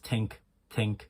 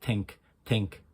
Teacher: Dentalize the THs. Make it more of a T. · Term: dentalizing